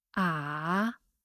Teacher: The third tone is at the lowest level of your personal pitch range, with a slight rising at the end of the tone duration.